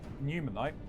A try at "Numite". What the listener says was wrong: Even though there's no, it's not 3 syllables long. It's Numite.